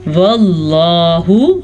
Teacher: लफ्ज़ अल्लाह को पुर पढ़ लीजिएगा, लफ्ज़ अल्लाह से पीछे ज़बर की वजह से।